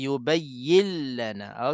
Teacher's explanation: Dia masuk tanpa dengung. Lam tu masuk tanpa dengung.